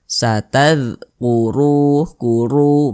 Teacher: huruf ro dibaca tebal, dibaca tafkhim, sehingga pangkalisan kita itu naik terangkat ke atas ketika kita mengucapkannya.